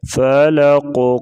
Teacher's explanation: قاف کو موٹا بھی کریں گے اور حروف قلقلہ میں سے بھی ہے، ادھر قلقلہ بھی کریں گے، یعنی ساکن حروف کو ہلا کر پڑھنا